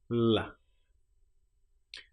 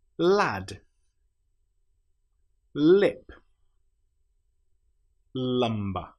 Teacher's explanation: We put our tongue up behind our top teeth and then we flap it down.